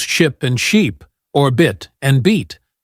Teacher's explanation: the difference is in how long you hold the vowel sound